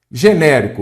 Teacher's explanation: olha aqui a sílaba tônica é antepenúltima